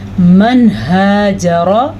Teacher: ज़ाहिर करके पढ़ा हमने, नून को छुपाया नहीं है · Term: इजहार